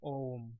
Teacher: तो ओम जो वर्ड होता है तो उसमें हम जो है इसको खींच के बोलते हैं, यानी हम इसको इस तरीके से बोलते हैं कि इसमें ध्वनि जो है काफ़ी लंबी खींची जाती है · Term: प्लुत स्वर